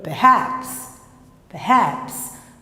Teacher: Esse ER se transforma em schwa. · Praticamente você fala o P e o haps, né?